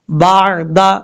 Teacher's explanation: عین کو کلیئر کرنا ہے، حمزہ کی آواز نہیں آنی چاہیے